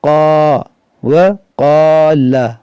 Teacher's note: دیکھیں یہ واو متحرک ہے، اس کو نہیں کھینچیں گے۔ قاف حرف مشتعلیہ ہے اور اس کے ساتھ میں الف مدہ ہے، تو اس کو کھینچیں گے، جیسے وقال، لام کو بھی نہیں کھینچیں گے، لیکن اس لام کو اس لام سے ملا دیں گے۔